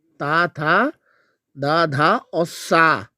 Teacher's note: जिन व्यंजनों के उच्चारण में जीवा की नोक ऊपरी दांतों को स्पर्श करती है। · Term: दंत व्यंजन